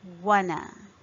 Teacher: In the end, there is a schwa sound.